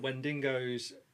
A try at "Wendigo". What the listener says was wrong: Yeah, there's no extra N in there.